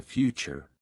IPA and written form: ˈfjuːtʃər (Future)